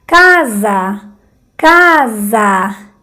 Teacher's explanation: Casa, ca más fuerte, za débil. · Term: vocales tónicas